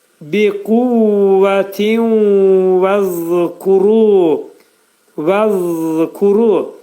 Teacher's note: Zəl hərfinin məxrəci demək dilimiz xəfif şəkildə 2 dişin arasına girəcək.